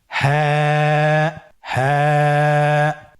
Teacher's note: হ্যাঁ হরফটি উচ্চারণের স্থান কণ্ঠনালীর শুরু হতে, অথবা আমরা যদি আরবিতে বলি হলকের শুরু হতে এই হরফটি উচ্চারিত হয়।